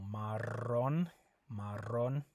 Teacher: when you have a double R, that you roll that R